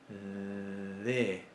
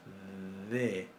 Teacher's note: La D a principio de palabra o en posición intervocálica la pronunciamos fricativa